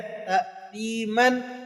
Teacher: دو زبر کی تنوین کو وقف کی حالت میں الف سے تبدیل کر دیتے اور پھر اسے ایک الف تک کھینچ کر پڑھتے ہیں